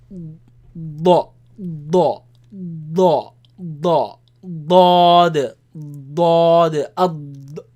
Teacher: As well as the front part of the tongue, but it's not behind the teeth. It comes, it touches the palate, the front palate, right? The gums, and it's a very heavy sound.